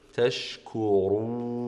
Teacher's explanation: الراء تكون مفخمه ثم الواو المديه مرققه في جميع احوالها